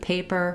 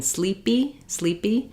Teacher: sleepy sleepy um you can hear that it's not sleep PE I don't have that burst of air it's an unaspirated PE